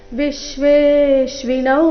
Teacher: ವಿಶ್ವೇಶ್ವಿನ ಮೊದಲ ಎರಡು ಅಕ್ಷರಗಳ ಮೇಲೆ ಆಘಾತ